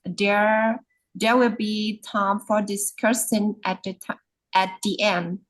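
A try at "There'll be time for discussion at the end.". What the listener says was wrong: Okay, it's not there will, it's there'll. There'll. Yeah, there'll be. So yeah, sometimes it's hard to pronounce words that usually, what do you call this? The shortcut method.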